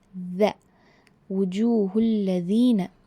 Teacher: Your tip of the tongue will come out a bit and touch the upper jaw of the teeth.